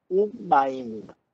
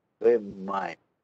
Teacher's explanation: Ele vai ter uma mudança, que é, em vez de ser V, ele vira U.